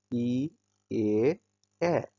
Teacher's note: প্রসারিত হয়ে উচ্চারণ হয় ই এ